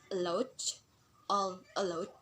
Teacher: All allowed, like all we have fall and allowed we have raise. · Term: fall and raising intonation